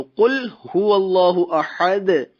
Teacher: قل یہ لام قلقلہ نہیں ہے، لام ساکن ہے، تو لام قلقلہ نہیں ہے